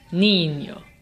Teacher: the emphasis is on the second last syllable · Niño ends in an O, which makes it llana, which means the emphasis is on the second to last syllable. And since the emphasis really is on the second to last syllable, we don't need an accent mark.